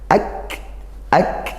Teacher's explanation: Har Qariah diperjelas lam sukunnya AKR hati-hati Kaf sukunnya ak ya dibaca syiddah kuat dulu ak kemudian dihamskan didesiskan nafasnya